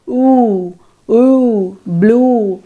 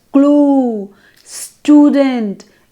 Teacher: blue represents the high back vowel